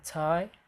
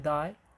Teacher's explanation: we have alveolar plosives. It's T as in tie and D as in die.